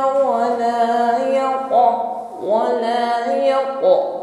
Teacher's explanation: pantulannya tebalkan ya, karena qaf ini memiliki sifat isti'la irtifa'ul aqsal lisan